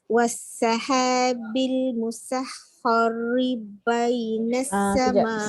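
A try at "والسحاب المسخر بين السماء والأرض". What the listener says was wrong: Sin betul dah nipis. Kha tebal pula. Kena tebalkan kha, sin nipis. Wassahabil musakhkhari.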